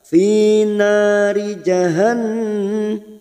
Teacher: nun yang bertasdid gunna musaddada kita tekan selama 3 harokat